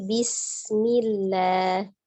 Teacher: alirkan bismillahnya karena dia memiliki sifat safir